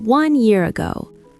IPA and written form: wʌn jɪər əˈɡoʊ (one year ago)